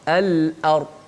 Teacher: lam hujung lidah, hamzah di mana di pangkal halkum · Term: lam qamariyah